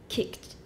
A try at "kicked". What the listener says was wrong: We don't usually explode it.